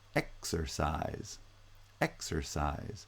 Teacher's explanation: both the first and the third syllables are stressed and only the middle syllable is unstressed so it's the middle syllable that has vowel reduction and you